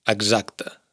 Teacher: Bueno, aquí deberíamos entrar en matices porque si os fijáis bien, el sonido de X se ha sonorizado al estar entre vocales